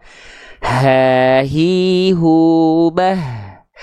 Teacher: Tempat keluar huruf H besar itu bukan dilafalkan dari dada, ya. Tapi dia dilafalkan dari yang namanya aqsal halqi.